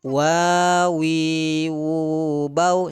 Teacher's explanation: mahraj keluar dari paduan bibir atas dengan bawah